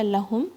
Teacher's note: हा के आवाज हलक के सबसे नीचे से आएगी · ہا کی آواز حلق کے سب سے نیچے سے آئے گی. لہم میم کو شیک نہیں کرنا ہے.